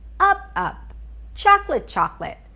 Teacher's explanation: I put the stress on the first word and I say it significantly higher in pitch. I mean higher in pitch, not just like slightly higher in pitch. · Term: reduplication